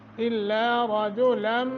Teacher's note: نون تنوین کے بعد میم مشدد ہے غنہ کریں گے